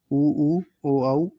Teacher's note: जिन स्वरों के उच्चारण में होठों का आकार गोल हो जाता है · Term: वृताकार स्वर